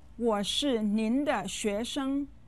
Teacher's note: 学生 uses the second and the first tones. Sometimes you'll hear it with the second and neutral tone.